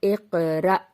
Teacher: اور حمزہ ساکن پہ جب جزم ہو، حمزہ پہ جب جزم ہوگا مطلب حمزہ ساکنہ تو جھٹکے سے پڑھا جائے گا